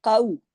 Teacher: वावे लीन है, काउ और काफ मोटा